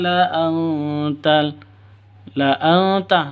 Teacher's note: nun mati bertemu dengan ta samar didengungkan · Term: Ikhfa Hakiki